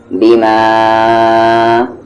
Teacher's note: میم کو ہم یہاں پر کھینچیں گے 3 سے 4 حرکت کے ایکول